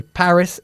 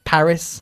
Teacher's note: Paris is pronounced differently we put the emphasis on the first syllable in English